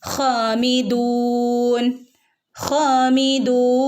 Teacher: ഹും ഹാമിദൂൻ ഹാമിദൂൻ ഹ ഹ തൊണ്ടയുടെ മുകൾ ഭാഗത്തുനിന്ന് വരുന്ന ലെറ്ററാണ് ഹ ഹനെ രണ്ടനക്ക് നീട്ടുകയും കൂടെ വേണം ട്ടോ